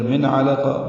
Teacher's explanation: من میں اظہار ہے، نون ساکن کے بعد عین آنے کی وجہ سے